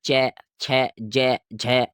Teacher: जीभ जो लगेगी तालुए पर लगेगी। ठीक है, ये तालवे से बोले जाएंगे।